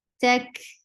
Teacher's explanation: There is no hums whatsoever in ta when it is mutaharika. And when it is attached with kaf, kaf has hums.